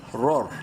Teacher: را، را زبر رور، دونوں را بولڈ ہوں گے کیونکہ پہلی را پہ زبر ہے